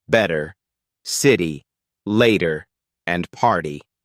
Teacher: the T disappears. It's just softened into a sound that's less sharp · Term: flap T